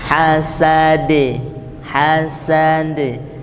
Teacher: Qalqalahnya terakhir, qalqalahnya pantulannya e